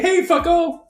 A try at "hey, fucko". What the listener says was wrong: Well, you said it wrong. You can't say, hey, fucko. You got to say, hey, fucko. It's the tone is part of it.